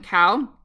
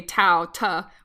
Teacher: the k sound in cow is further back, and you make it further back in your mouth. And so they front it and say tau, ta, which is further front. So that's why they call it fronting.